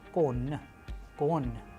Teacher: Soft sign, it doesn't have its sound, it softens the preceding consonants.